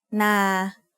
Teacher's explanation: So now that we know what a live sound is, we can learn our first tone rule, which is low class initial consonant plus live ending equals mid-tone. A mid-tone is pronounced at a flat pitch in the middle of your regular vocal range.